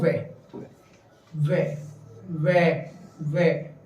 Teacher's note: वे का मतलब हमारे दांत पे भी जीभ टच हो रही है और हमारे होठ भी आपस में मिल रहे हैं, इसलिए वे का उच्चारण स्थान दंत ओष्ठे है।